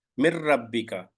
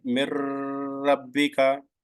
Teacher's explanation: mim kasra directly joins with the idgham letter ra. Mir rabbika, not like mir rabbika, no prolongation, no gunna.